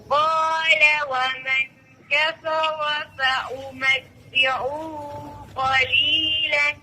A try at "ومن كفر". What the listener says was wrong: और आपने वमन काफरा पे गुन्ना छोड़ दिया है, قال ومن كفر فأمتعه قليلا